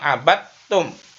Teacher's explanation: dal sukun bertemu tak, maka dalnya tidak dibaca tapi diganti tak, namanya idgham mutajanisain.